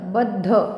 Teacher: बद्ध ब वर आघात कारण पुढे जोडाक्षर आहे